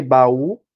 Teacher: é uma oxítona né Tem um som mais forte na última